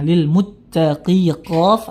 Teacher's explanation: Kemudian tanwin bertemu lam, ya idgham bila gunnah